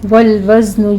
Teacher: والوزن میں زے کی سیٹی کی آواز کے ساتھ ہم زے کو ادا کریں گے، وز سین نہیں آنا چاہیے